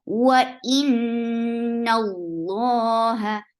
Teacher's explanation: Lafz Jalala will be heavy here because there is fatha before it. La short, hu short.